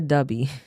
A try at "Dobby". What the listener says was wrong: Dobby. Dubby. Because the way you say it, when you say it regularly, you sound like you said dubby.